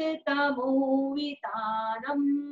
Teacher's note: बिंदी के बाद कुछ भी नहीं है तो हम वहां पर म पढ़ेंगे